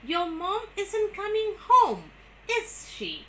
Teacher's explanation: So with a falling tone on home, but with a rising tone on is.